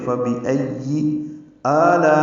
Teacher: لا میں الف مدہ کے بعد حمزہ آنے کی وجہ سے مد متصل ہے، ہم اس کو 4 حرکات سے زیادہ لمبا کرتے ہیں